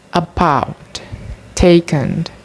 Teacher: Central vowels made by positioning the tongue halfway between front and back vowels, produced by putting the tongue down and back. Central vowels in American English as mid-central unrounded neutral vowels